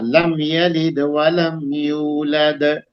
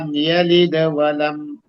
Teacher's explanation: تو چاہے وہ بیچ کلمے کے اندر ہو یا آیت کے بیچ میں ہو اور آپ کی قرات کنٹینیو ہو تو یہ ادنا درجہ اس پہ قلقلہ کریں گے یعنی ہلکا ہوگا